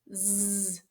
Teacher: You can clearly feel your throat buzz. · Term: Z sound